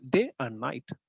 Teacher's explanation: One unstressed syllable in the middle, two stressed syllable.